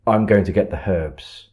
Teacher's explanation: So it kind of, you're forcefully removing that H rather than it sounding natural